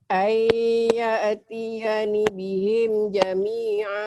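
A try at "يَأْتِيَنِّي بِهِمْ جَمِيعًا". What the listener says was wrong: Panjang. Ayyatiyani panjang wajib.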